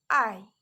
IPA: ɑɪ